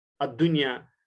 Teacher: نون ساکن ہے، لیکن نون ساکن کے بعد جو یا ہے وہ اسی کلمے کا حصہ ہے، لہٰذا یہاں پر ادغام نہیں بلکہ اظہار مطلق ہوگا